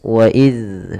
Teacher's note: tempat keluarnya adalah dari ujung lidah kita menempel dengan gigi seri atas waid Seraya dia kita memiliki sifat yang namanya rakhawah mengalir suaranya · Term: huruf zal